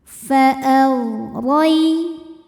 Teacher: Ghain jangan sampai mantul. Simpan di tenggorokan paling atas, suaranya mengalir karena punya sifat namanya rakhawah.